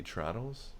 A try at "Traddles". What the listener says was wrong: Why would it be Trottles? But you're changing the enunciation of the A. Traddles.